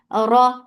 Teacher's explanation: Ra is heavy because there is fatha on it.